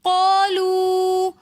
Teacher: قالوا کے اندر قاف کے ساتھ الف مدہ ہے تو اس لیے ہم قا اس کو ایک الف کی مقدار کھینچ کر پڑھیں گے۔ لو کے اندر واو مدہ واو ساکن اس سے پہلے پیش ہونے کی وجہ سے ہم اس واو کو بھی تھوڑا سا کھینچ کر پڑھیں گے